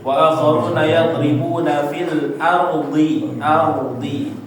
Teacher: Nah, a-nya enggak boleh jadi o, ya. Gara-gara roh tebel jadinya keikutan a-nya.